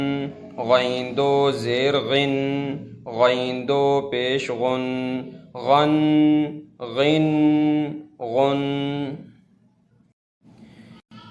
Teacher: خا اور غین دونوں گلے سے نکلیں گے زور لگا کر